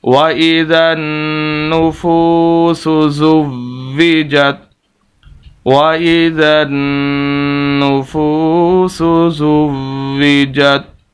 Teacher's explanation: ایک تو ہم نے یہاں پر غنہ کرنا ہے نون مشدد پر، فا کو لمبا کرنا ہے کیونکہ واو مدہ ہے، اور دوسری یہ کہ یہاں پر واو کو ہم نے سخت کر کے پڑھنا ہے کیونکہ شد ہے، اور آخر میں ہم نے وقف کرنا ہے۔